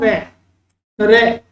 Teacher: ठीक है, उसके बाद में प्रकंपित में क्या होता है कि जब हम बोलते हैं तो जीभ जो है वो 2-3 बार कंपन होता है,